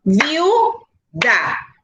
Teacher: Vemos que viuda tiene vocal I cerrada, vocal U cerrada. Me dice la regla que cuando dos vocales distintas, cerradas, van juntas, no se separan, se forma el diptongo.